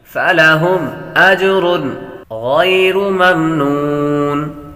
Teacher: غیر یا حروف لین میں سے ہے, لمبا نہیں کریں گے.